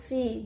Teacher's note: di bibir bawah sama Gigi atas yang bersentuhan jadi misalnya V berarti sudah jelas bahwa bibir bibir bawah menyentuh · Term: labiodental